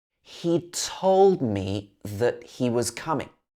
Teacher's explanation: And I've lost the T. It's changed to a glottal stop.